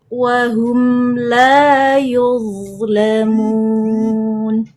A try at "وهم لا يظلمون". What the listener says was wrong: Coba naikkan lagi pangkal lidahnya. La yulamun. Yul. Ulangi.